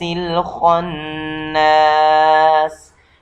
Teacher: جیسے من شر الوسواس الخناس، خناس یہاں خا یہ بھی حرف تفخیم میں سے ہے، اور اس کے بعد جو نون پر شد آ گیا ہے تو اس وجہ سے یہاں بھی غنہ کیا جائے گا